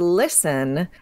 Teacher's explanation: so listen never had its T pronounced